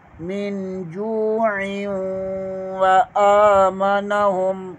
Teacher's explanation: عین کو واو کے ساتھ ملائیں گے کیونکہ تنوین کے بعد واو آ جائے تو حروف یرملون میں سے واو آتا ہے، یہاں بھی ادغام کر کے غنہ کریں گے